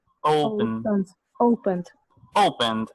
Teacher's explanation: Fíjese que esa O es como con una U que suena muy bajito.